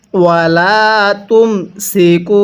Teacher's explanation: কাফের মধ্যে টান দিব, পেশের পরে ওয়াও সাকিন